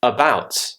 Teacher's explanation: The word about, about. So the beginning of the word has now got the schwa sound.